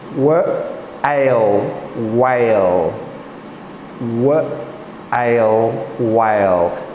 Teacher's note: Did you notice there's no H sound in that? I'm just going whale. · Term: WH sound